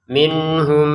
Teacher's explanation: nun sukun bertemu ha kita baca dengan jelas ya. Jadi jelas itu artinya tidak ada dengungan. Nah jadi jangan dibaca minhum gitu.